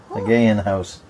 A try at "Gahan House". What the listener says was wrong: Gay in house. I still think it's pronounced the Gahan. There's no Y, so it can't be the gay in house.